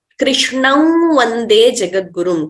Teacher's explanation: Anuswara is not represented, or it's not chanted or recited completely. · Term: nasal tone